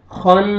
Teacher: خا فتحہ نون شدہ نون مشدد ہے غنہ کریں گے